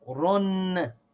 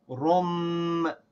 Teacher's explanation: The noon sound that is made by this tanween, by these two dhammas, we're going to replace it with a meme sound. So instead of saying run, like with the noon sound, we say rum, like with the meme sound · So that noon sound from the tanween gets replaced by a meme sound.